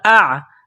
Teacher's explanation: یہ عین گلے کے درمیان سے عین کو نکالنا ہے، عین کو زور لگا کر نکالیں گے